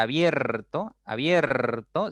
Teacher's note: Y cuando tú pronuncias la palabra abierto, abierto, se abre más tu boca al momento de pronunciar la E. Por lo tanto, ese es un diptongo creciente, porque tu boca se abre un poco más.